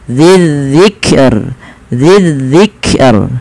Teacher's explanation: Karena sebelum huruf yang dimatikan itu ada huruf kasrah, maka dia dibaca dengan tipis rohnya, tidak dibaca wal Qur'ani dzidzikr, enggak, tapi dia dzidzikr, dzidzikr.